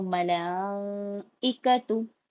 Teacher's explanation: مد کے بعد حمزہ اسی کلمے میں ہے تو یہاں پہ مد متصل ہو رہا ہے، اس کو 4 سے 5 الف کے برابر کھینچ کے پڑھیں گے ، حمزہ کے نیچے زیر ہے، زیر کو جلدی پڑھیں گے